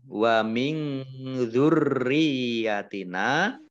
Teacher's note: nun sukun bertemu dengan huruf zal, ini bacaan ikhfa ya, dibaca samar-samar. Kemudian roknya dibaca double, ada tasdidnya.